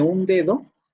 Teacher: el sonido oclusivo sonoro dental aparecerá siempre después de una nasal. En el caso de un dedo, tenemos antes de la aparición del fonema D o del fonema D, sí, del fonema D, tenemos una nasal.